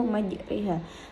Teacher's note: ro dibaca imalah atau condong yaitu membaca antara harakat fathah dan kasrah